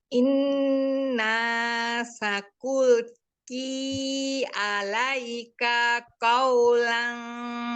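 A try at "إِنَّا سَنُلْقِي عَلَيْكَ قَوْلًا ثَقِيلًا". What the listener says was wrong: Sanulqi, bukan sakulki, sanulqi. Tanya pendek Umi, alaika qawlan thaqila.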